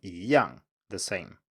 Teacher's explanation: in front of a fourth tone it turns into a second tone